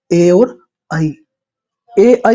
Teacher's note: कंठ और तालू से जो मिलकर बनते है जो दोनों से मिलकर बनते हैं वो होता है आपका ए और आई ए आई जो होता है आपका वो दोनों से कंठ से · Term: कंठ तालव्य